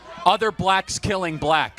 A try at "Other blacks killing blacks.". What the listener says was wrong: Look how you say that shit with that racist ass K at the end.